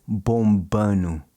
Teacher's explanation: It's really common in certain parts of Brazil to drop that D, especially in the state of Minas Gerais. · Notice how he doesn't pronounce the D in bombando.